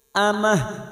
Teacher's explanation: Mash'amah. Ini hamzah bukan ain, maka membacanya cukup amah. Amah tak marbuta yang dibaca waqaf, maka bunyinya ha.